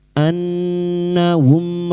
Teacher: Mim sukun dibaca jelas tanpa mendengung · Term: izhar syafawi